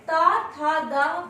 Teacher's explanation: दंत से। क्योंकि जब हम ता, था, दा बोलते हैं तो हमारे दंत आपस में मिलते हुए ध्वनि प्रवाहित करते हैं।